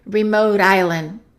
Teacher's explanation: Let's connect remote and island, and that T is going to be between two vowels, so it's a fast D